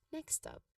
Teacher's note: when pronouncing this term next stop, you give equal stress to both words.